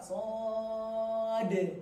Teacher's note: So-nya panjang 6 harokat. Shad. Akhirnya qalqalah.